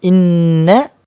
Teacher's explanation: hujung lidah pergi ke arah gusi gigi depan bagian atas Ah itulah yang setepat-tepatnya dia keluar kalau kita tengok ambonnya hadis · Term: huruf nun